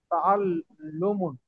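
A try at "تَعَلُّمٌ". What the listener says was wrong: তাআল্লুমুন, এটা দুইটা পেশ হয়ে গেছে, একটা পেশ হবে। তাআল্লুমুন।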